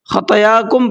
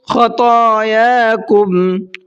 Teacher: طا کو بھی منہ بھر کے پڑھنا ہے اور کھینچ کر کے بھی پڑھنا ہے، خطایا نہیں پڑھنا ہے اس کو، اکثر غلطی یہی کرتے ہیں لوگ، خطاياكم پڑھتے ہیں، طا کو نہیں کھینچتے ہیں، تو کیسے پڑھنا ہے آپ کو؟